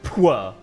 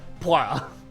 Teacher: It's not a W, but it's like a back of the throat R